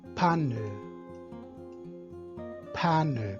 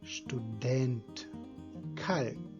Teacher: Chamo a atenção de vocês que nos dicionários, quando vocês forem procurar, isso num dicionário que trabalhe com transcrição fonética de verdade, ele é representado por um Hzinho em cima da palavra. Então temos lá o P que é aspirado, então o Hzinho vem em cima do P.